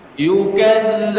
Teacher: Zal ada tasdidnya dan zal punya sifat namanya rakhawah, mengalirkan suara yang panjang.